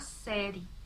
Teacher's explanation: Não pronunciamos a vogal E final.